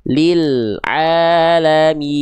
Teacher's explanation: lam jangan sampai bunyinya terputus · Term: lam sukun